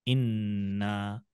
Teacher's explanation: आपको दो बार नून को नहीं पढ़ना पड़ रहा है, एक ही नून है उसको रोके हुए हैं, और जो भी जबर जेर पेश है वो आप उस पर लगा दे रहे हैं, आगे बढ़ जा रहा है। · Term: तशदीद